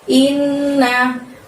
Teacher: Innya tahan selama 2 harokat baru bunyi na.